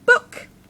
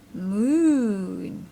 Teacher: one is short short ooh just like in book one is long ooh just like in Moon